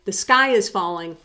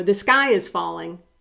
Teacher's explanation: they mean two different things but they sound identical